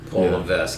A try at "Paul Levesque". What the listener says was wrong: You didn't even pronounce the S. It's just Levesque. Paul Levesque.